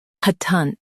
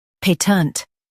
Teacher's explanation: In US, stress pat and keep ent light. In UK, stress pay and soften tent.